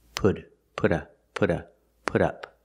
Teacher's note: Again, the T in put changes to a fast D.